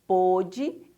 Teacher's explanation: essa palavrinha com acento circunflexo ela é pronunciada um pouquinho mais fechada